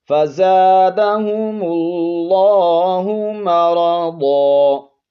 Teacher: نون تنوین کو الف سے بدل دیں گے